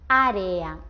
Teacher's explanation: es cuando tenemos dos vocales pero esta vez estas dos vocales están juntas pero las pronunciamos separadas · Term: hiato